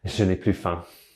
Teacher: When used in a negative sense, the s is never pronounced. It's always plu.